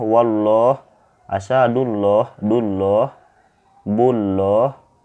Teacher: Apabila ada huruf berbaris fathah atau dhummah bertemu dengan lafaz Allah itu dinamakan tafkhim tafkhim ini artinya itu tebal